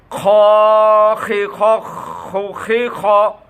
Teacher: ওই খড়খড় আওয়াজ আসতে হবে এবং মোটাভাবে কণ্ঠের শেষে উচ্চারিত